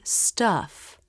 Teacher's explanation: a very relaxed jaw drop with relaxed lips the tongue presses down just a bit in the back